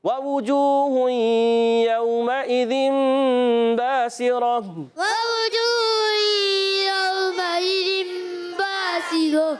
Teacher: اور با الف زر با الف مدہ ایک الف کھینچنا ہے، سین کے زیر سیٹی کے ساتھ ادا کریں گے، حرکتیں نہیں کھینچیں گے، را پر زبر حرکتیں نہیں کھینچیں گے مگر را کو موٹا کریں گے، را پر زبر آ گیا۔